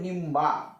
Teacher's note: निंबा म्हणजे अनुस्वाराचा उच्चार झाला म